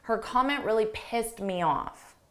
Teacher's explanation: when we say this in a sentence and there are words that come after you almost don't hear that t so you can't really distinguish that it's in the past simple